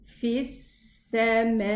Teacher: So I go from the fa kasra to the sin shadda. Fis, and the sin has this character of rakhawa and the whistling sound, so I let it run.